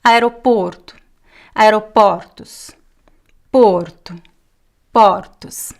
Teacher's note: This last O at the end of words is just a very weak U sound.